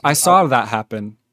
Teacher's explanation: when people say saw I saw that happen they say SAR and they just do a light r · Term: intrusive r